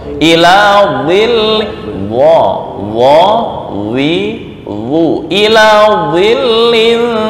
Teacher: Dha itu isti'la. Apa itu isti'la? Mengangkat lidah ke langit-langit.